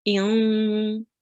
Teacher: And again, with the kasratain, there is a nasal sound. So we will read the 1 kasra and we will make a nasal sound. So with this alif here, we will read it as in.